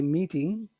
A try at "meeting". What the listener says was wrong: don't do meeting say meeting go down instead of up